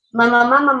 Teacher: o lábio está sendo vedado. E aí ela não está ficando com a respiração oral, porque ela está com a boca fechada, porque ela está fazendo vedamento.